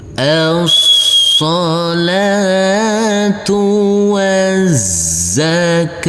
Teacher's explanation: huruf tak marbutoh karena kita wakafkan maka berubah menjadi huruf ha